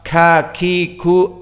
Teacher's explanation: dia harus ada nafas yang keluar di saat disukunkan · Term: hams